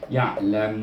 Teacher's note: Jadi bunyinya ya'lamun, di mana lidah kita ternaik ke langit-langit